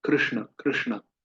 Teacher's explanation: तो आप जब भी कृष्ण, कृष्ण, कृष्ण उच्चारण करें तो ध्यान रखें री, वो जीभ पीछे की ओर मुड़े